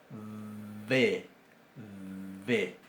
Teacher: la B corta o la V, como se dice en España, tenía una pronunciación labiodental.